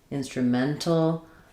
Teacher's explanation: instrumental is stressed on the second to last syllable men